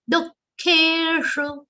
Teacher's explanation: for that visarga, you just have to give a prashvas. That is, you have to breathe out after saying du. Dukkeshu. Tatha manapamanayoho.